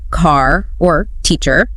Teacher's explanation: in American English the r is usually pronounced quite strongly as in car or teacher but in many British accents that